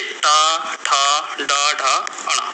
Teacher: ऐसे शब्द जिसमें हमारी जीभ जो है वो लौट जाती है। बिल्कुल लौट जाती है। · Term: मूर्धन्य, मूर्धन्य व्यंजन